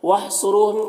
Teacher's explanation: صاد حروف مستعلیہ میں سے پر پڑھیں گے، را کے اوپر پیش ہے، را کو پر پڑھیں گے، یہاں پر واو مدہ ہے، ایک الف کے برابر کھینچیں گے، میم میں اظہار شفوی ہو رہا ہے، جلد پڑھنا ہے۔